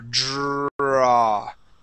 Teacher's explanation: you can elongate which means to hold on to that R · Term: Dr sound